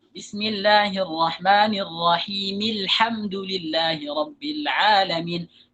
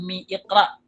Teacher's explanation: ketika Disambung itu hamzahnya enggak dibaca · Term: Hamzah wasal